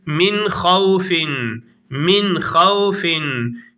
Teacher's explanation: açıktan okunur yani Genze atılmaz idham yapılmaz